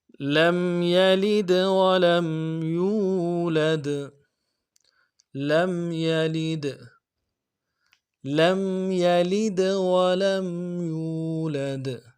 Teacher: لم میں میم ساکن میں غنہ کریں گے، لم یلد، لید غنہ کریں گے، یہ جو دال ہے یلید اس میں قلقلہ ہوگا، لم یلد، لم یلد ولم یولد۔